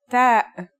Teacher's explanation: The pronunciation is like the English T except you should release your breath with a strong burst of air